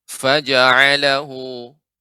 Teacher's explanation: Ketika membaca fa lebih ditampakkan lagi Ibu aliran udaranya ya, hamesnya